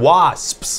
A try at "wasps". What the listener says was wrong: It sounds like you're saying was, and then you want to tell me a secret.